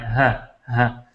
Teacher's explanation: بالکل پورا کا پورا جو سانس بندے نے اندر لیا ہوتا ہے وہ سارا کا سارا باہر نکل جاتا ہے